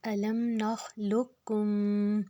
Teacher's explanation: قاف جو ہے یہ موٹا ہے لیکن دوسرا کاف جو شد والا ہے وہ پتلا ہے تو ہم جو لام کے پیش کو پتلے والے کاف کے ساتھ ملائیں گے.